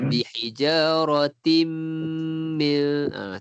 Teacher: Tanwin bertemu dengan mim, masukkan berserta dengung. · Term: idgham bi gunnah